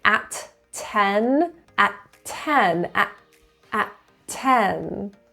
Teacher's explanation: Notice I link at 10, at 10, at 10. You really only hear one T. There's a glottal in front of it.